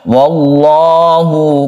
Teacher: Lam jalalah dalam hal ini karena sebelumnya ada fathah, maka ini dibaca tafkhim atau tebal. Jadi membacanya wallahu, bukan wallahu tapi wallah karena tebal atau tafkhim.